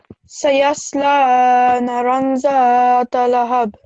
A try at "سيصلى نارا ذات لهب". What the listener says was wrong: it's not naran because we have to pronounce this for 2 seconds. Naran. Try again.